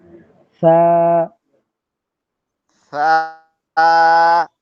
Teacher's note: সায় একটা বাতাস বের হচ্ছে, হামসের হরফ বলে হয় ওইটাকে।